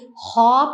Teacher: ख एक खुरदरी हवादार आवाज है जो हलक के ऊपर वाले हिस्से से अदा होती है। लेकिन सख्त हवा के दबाव के साथ।